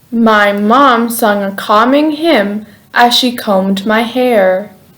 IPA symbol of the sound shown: m